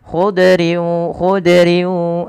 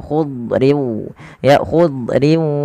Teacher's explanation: lidah terangkat dan dia menebal Kemudian yang kedua idbaq idbaq itu lidah kita lebih melekat-lekat ke atas langit sehingga dia menebal suara huruf dadnya